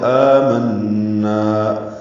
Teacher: آمنا میں آ مد بدل ہے، یہ امنا تھا، لیکن امنا سے آ دو ایک حمزہ لگا کے اس کے اوپر کھڑا زبر ڈال دیا گیا ہے، دونوں حمزہ جو ہیں اکٹھے کر دیے گئے، اس لیے مد بدل بن گئی ہے، یعنی تبدیل کر دیا گیا ہے. من نون مشدد ہے، اس پہ غنہ ہے، نا الف مدہ ہے